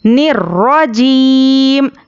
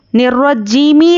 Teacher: آخری حرف پر جزم دے کر سانس توڑیں گے